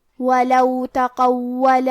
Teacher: کیونکہ قاف حروف تفخیم میں سے ہے تو ہم یہ حرف کو موٹی آواز میں پڑھیں گے. واو پہ تشدید ہے لہذا ہمیں 2 حرف کے برابر واو کو پڑھنا ہے کیونکہ تشدید کی اصلیت 2 حرف ہے. · قاف کی ادائیگی زبان کے جڑ اور تالو کے نرم حصے سے ہے. کیونکہ قاف حروف تفخیم میں سے ہے تو ہم یہ حرف کو موٹی آواز میں پڑھیں گے. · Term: حرف القاف